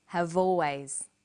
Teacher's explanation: notice how in conversation we link the final consonant sound V with the initial vow sound o have always crocodiles are crocodiles